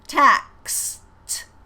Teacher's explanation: you have to have that ks on tax so we have to hear the k and the s